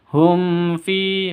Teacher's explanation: sebuah mim sakin bertemu dengan fa, jelas dan berbeda, tidak boleh dinasalisasi